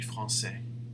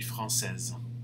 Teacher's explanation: he doesn't say the S, but madame will have to pronounce the Z sound at the end.